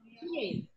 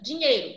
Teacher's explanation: Quando eu falo rapidamente, eu não percebo a presença desse i. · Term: semivogais